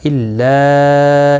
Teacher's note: مد منفصل ہے، 3 الف کی مقدار کے برابر کھینچ کر پڑھیں گے